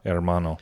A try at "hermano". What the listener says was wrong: Can you roll the R? Hermano.